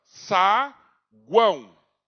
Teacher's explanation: você vai ver que o som sai mais pelo nariz. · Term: tritongo nasal